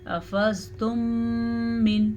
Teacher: میم ساکن کے بعد دوبارہ میم متحرک آ جائے تو دونوں کو آپس میں غنّے کے ساتھ ملا دیتے ہیں. اسے ادغام شفوی کہتے ہیں.